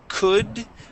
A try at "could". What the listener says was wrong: But could. Instead of could, it is could. You're saying cool. It is could.